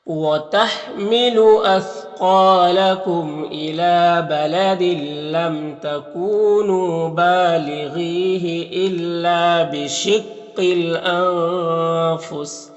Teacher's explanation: نون کی آواز کو ناک میں چھپا کر ایک الف کی مقدار کھینچ کر پڑھیں گے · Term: اخفا